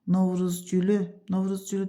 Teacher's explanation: Novruz gülü də sona düşür